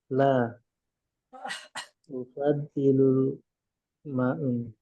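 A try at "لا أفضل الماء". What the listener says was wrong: Al-fadilul ma, harokat terakhir ya.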